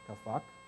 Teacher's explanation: the P, because it's between two vowels, turns into an F. So that's kafak, right?